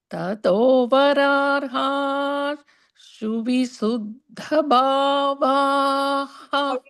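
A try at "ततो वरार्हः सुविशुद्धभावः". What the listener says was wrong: How do you say the visargaha there? Tato vararha suvishuddha bhavaha. Vararhas. You have to say the is sakaraha there. Tato vararha suvishuddha bhavaha.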